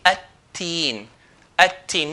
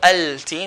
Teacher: they used to merge the lam into the letter. So the lam is not going to be pronounced. So alif will skip to the ta.